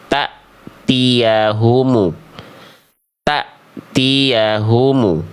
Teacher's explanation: Salahnya karena hamzah sukunnya dibaca panjang. Tuh harusnya hamzah sukunnya dibaca putus